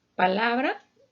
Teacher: su sílaba tónica la vamos a encontrar en la penúltima sílaba